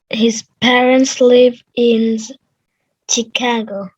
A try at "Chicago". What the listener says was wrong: Chicago. It's a sh, not chi. Chicago. Yeah, Chicago. Different people say it different way, but it's not a ch, it's a sh for sure.